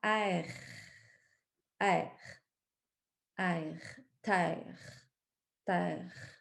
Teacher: c'est en avant c'est pas dans le fond de la gorge